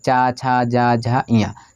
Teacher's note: तालु यानी दांत के ऊपर वाले मसूड़े में जाके टकरा रही हैं। देखिए चा छा जा झा इया, तो ये तालब्य होती हैं।